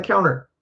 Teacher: in fast conversational American English, we'll drop that T sound